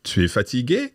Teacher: Raising your voice at the end, just like we can do in English in some ways.